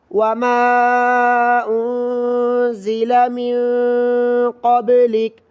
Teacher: من قبلک میں بھی ناک میں آواز چھپا کر پڑھنا ہے کیونکہ دونوں جگہ نون ساکن ہے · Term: غنہ